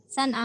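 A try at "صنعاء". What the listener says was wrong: Sana'a, ya. Sana'a, Sana'u, ya. Jadi ada hamzahnya terakhir, ya. Sana'u.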